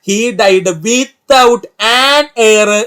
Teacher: ഇതിൽ എച്ച് എന്ന് പറയുന്നത് സൈലന്റ് ആയതുകൊണ്ടാണ് കേട്ടോ എയർ എന്ന് പറയുന്നത്